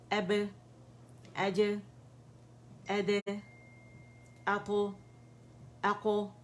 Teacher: कलकला हुआ, क्योंकि शिद्दा आवाज़ सख्ती कुव्वत से बंद हो गई, शिद्दा स्ट्रॉन्ग सिफा है, इसके बाद ये खूबी वाज़ेह होगी।